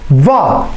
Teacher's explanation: दंतोष्ठ यानी जिसके उच्चारण में क्या हो, दांत और ओठ का प्रयोग हो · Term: दंतोष्ठ ध्वनि